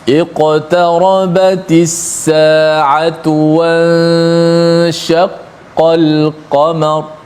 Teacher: Dipanjangkan gunnah pada ikhfa, nun bertemu dengan huruf shin.